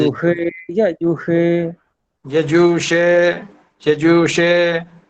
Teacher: आप ऊ की मात्रा दीर्घ लगा रहे हैं, वहां पर ह्रस्व है